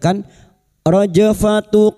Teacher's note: jim sukun yang mati asli di tengah kalimat qalqalah sugro jangan lupa dipantulkan